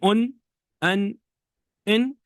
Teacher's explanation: Tanween, when you say an, in, it's a nun that's pronounced, but it's not written.